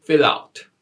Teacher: finish the consonant and the Nexxus syllable begins with a vowel the preceding consonant moved to the next syllable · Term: linking